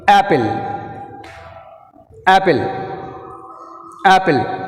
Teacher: The stress falls on the first syllable.